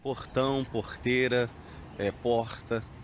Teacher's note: Um pouco mais suave que a pronúncia carioca, sai da garganta também o R, ouvido em Belo Horizonte e nas capitais do Norte e do Nordeste. É um R gutural.